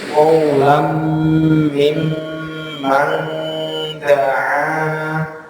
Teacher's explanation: mim tasydid dan nun tasydid itu gunnah ditahan